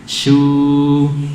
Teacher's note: tapi shu tipis. Suaranya turun, bukan naik.